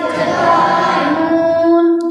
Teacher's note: জিবের আগা এবং তার বরাবর উপরে কাঁচ কাটা তালুর সাথে লাগিয়ে উচ্চারিত হয়